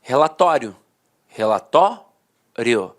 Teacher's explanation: a pronúncia paroxítona terminada em ditongo falava assim ó relatório relatório a penúltima sílaba era sílaba mais forte e a última de fato perdi a força Então os dicionários · A penúltima sílaba era a sílaba mais forte e a última, de fato, perdia a força.